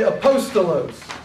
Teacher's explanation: a postolos you don't say opposed to lose you say apostolos the emphasis is on the second syllable